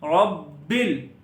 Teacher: را کو موٹا پڑھنا ہے، با پر تھوڑا سا رکنا ہے، با پر کلکلہ بھی کرنا ہے، اور با کو لام کے ساتھ ملا دیں گے، ربل.